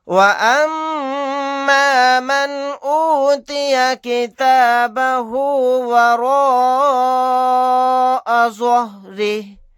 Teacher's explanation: میم کے اوپر تشدید ہے, یہاں پر غنہ کر کے پڑھیں گے